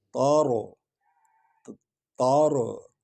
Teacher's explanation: تا کو نرم پڑھیں گے یعنی باریک، لیکن را کو پر پڑھیں گے